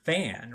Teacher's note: fan has a nasalized vowel